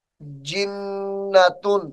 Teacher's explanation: وقف کی حالت میں اس لفظ کو جنہ پڑھا جائے گا